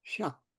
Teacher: So it ends with a K, but purse your lips around the K.